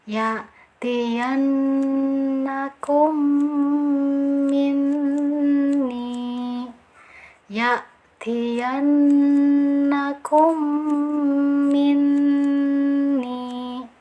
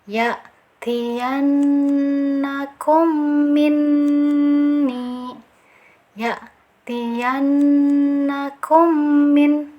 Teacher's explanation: Cara bacanya kita sempurnakan tasdidnya, kemudian diberi dengungan atau gunah ditahan selama 2 atau 3 harokat ya.